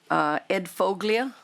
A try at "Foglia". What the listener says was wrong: Is pronounced folia. The G is silent. It means foliage like in Italian. And now if you say folia, you're now multilingual.